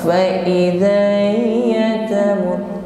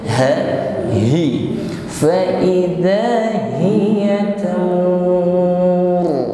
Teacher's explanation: huruf ha dengan jelas kita sampaikan pada makhrajnya aqsal halqah, tidak dibaca ngambang